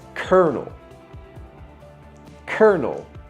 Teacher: There's no R in the word, but somehow it gets added. And the L, C-O-L, we completely take it away, and instead we put an R. So we don't say colonel, we say kernel.